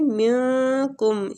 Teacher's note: ادھر نون ساکنہ کا اخفا کریں گے، نون کو چھپائیں گے